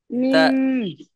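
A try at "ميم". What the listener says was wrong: মিম না, আগের থেকে ঠোঁট চেপে ধরা যাবে না। আগে হলো মি বলে টানতে হবে, মিম।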